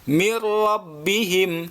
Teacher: tanpa dengung hanya melebur saja